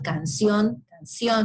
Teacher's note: en el castellano de América, los fonemas C y S se pronuncian igual